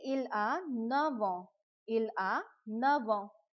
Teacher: F, it is changing into v if the next word is a vowel.